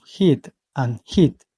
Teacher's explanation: The pronunciation of heat and heat, we talk about high front vowels because the sound is made with the front part of the tongue in a raised position